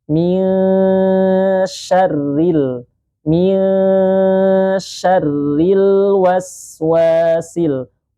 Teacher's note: was sinnya dialirkan suaranya terlebih dahulu